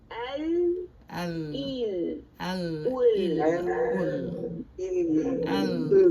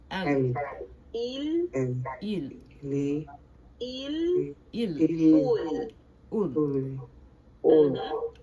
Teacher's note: You're going to be spreading your tongue, and you're going to be right there where the teeth and gums meet, pressing out like this, touching the canine and pre-canine.